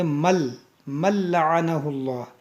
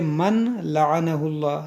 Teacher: بعض لوگ اس کو پڑھتے من لعنہ اللہ، یہ غلط ہے. یہاں پر ہوگا ادغام، کیونکہ نون ساکن کے بعد حروف یرملون میں سے لام ہے